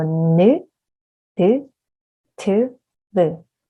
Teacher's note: And also all of these are using the tongue, the tip of the tongue hitting the top of your mouth, right?